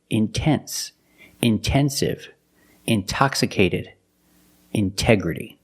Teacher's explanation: the stress is after the NT in these words so we pronounce a t as a pure T